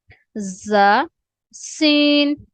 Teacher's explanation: زا اور سین میں ہلکی سی جو ہے نا سیٹی کی آواز آنی چاہیے